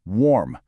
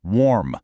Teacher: In the UK, it's a smoother warm, but in the US, you really hear that R sound